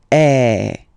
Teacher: the sound is really open and normally your mouth should be opened a little bit more